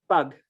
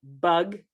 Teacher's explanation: the difference between a voiceless, unaspirated stop and a voiced stop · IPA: [pɑg]